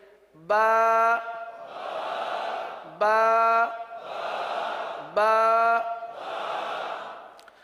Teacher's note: کہاں سے ادا ہوگا؟ با ہونٹوں کے، دونوں ہونٹوں کے تر حصے سے ادا ہوتا ہے۔